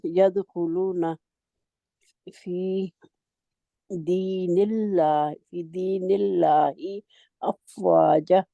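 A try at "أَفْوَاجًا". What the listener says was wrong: नहीं आप जा क्यों कहते हैं आगे मद है। हमने पढ़ा हरूफे मद्दा कहाँ से आते हैं और ये दो काउंट लंबे होते हैं।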